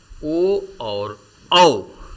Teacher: ओ और औ का उच्चारण कंठ और ओष्ठ दोनों से मिलाकर किया जाता है, इसलिए ओ औ को कंठोष्ठ कहा जाता है।